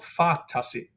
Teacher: Fa is long by nature because it's a long A. Tasi is short. There's nothing to lengthen it. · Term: dactyl